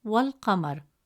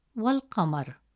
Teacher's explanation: Instead of pronouncing the alif hamza sound, the sound flows directly from wa to al-Qamar, wal-Qamar. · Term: Hamzat al-Wasl